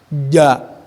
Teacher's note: pengucapan jim sesuai dengan makhraj, bahwa tengah-tengah lidah naik ke langit-langit atas